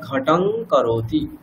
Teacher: অনুসারের পরে ককার থাকলে আমরা অনুসারকে কি বলব ক বর্গের পঞ্চম বর্ণ বলবো তাহলে অনুসার কি হয়ে যাবে ন হয়ে যাবে তাহলে কি উচ্চারণ হবে ঘটং করতি বোঝা গেল >> ঘটং করতি >> যদি প বর্গের বর্ণ থাকতো জলম পাতি বা জলম পিবতি জলম পিবতি মানে হচ্ছে জল পান করে আচ্ছা এখানে দেখুন অনুস্বারের পরে কি আছে?